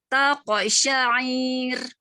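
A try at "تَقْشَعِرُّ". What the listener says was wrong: Ainnya kepanjangan karena nggak ada panjang ainnya. Nah, taqsyair. Ya, jadi hati-hati ya. Kalau ro ini masalahnya kalau pakai tasydid terus tidak boleh pula kita terlalu itu nggak boleh. Lembutin dikit.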